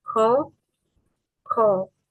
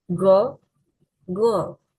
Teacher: Ke is voiceless velar plosive. G is voiced velar plosive. The difference is in voicing.